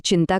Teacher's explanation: તીવ્ર અનુસ્વાર જેનો ઉચ્ચાર એકદમ સ્પષ્ટ અને રણકાવાળો હોય છે